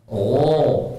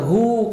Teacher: Kalau cuma gho itu bisa semua tapi tebal. Pangkal lidah itu naik. Jadi lidah bagian pangkalnya naik.